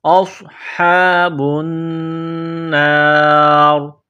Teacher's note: ہا کو ایک الف کی لمٹ میں کھینچنا ہے، با کو نون کے ساتھ ملانا ہے، نون مشدد ہے تو غنہ کریں گے، آواز ناک میں چھپائیں گے